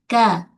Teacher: Kalau huruf kaf, okey, pangkal lidah permulaan lelangit keras. Ka. Dia huruf yang nipis, tak terangkat pangkal lidah pada huruf kaf.